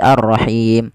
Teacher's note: Nah, inilah yang kita namakan dengan mad arid disukun, yaitu panjangnya kita boleh memanjangkan 2 harakat, boleh pula 4 harakat, boleh pula 6 harakat.